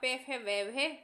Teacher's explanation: इन अक्षरों के उच्चारण में दोनों ओष्ठों का प्रयोग होता है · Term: द्रष्टोष्टे